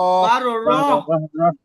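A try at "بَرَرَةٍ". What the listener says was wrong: আপনি কেন 12 র টান দিলেন? আগে টান দিয়েছেন, মনে আছে ভাই?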